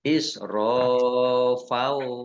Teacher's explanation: Fathah tanwin bertemu dengan huruf wawu, idgham bi gunnah, masuk dengan mendengung, yaitu mendengung wawu, ditandai wawunya ada tasdidnya.